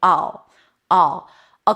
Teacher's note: it's a schwah and a dark L. Make sure you kind like create some tension here in the back.